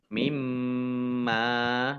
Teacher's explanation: Mimma mim tasdid dibaca gunnah atau mendengung ditahan 2 harokat